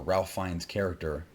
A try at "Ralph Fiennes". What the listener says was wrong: What is it with you and mispronouncing the man's name, bro? There's no L. There's no L.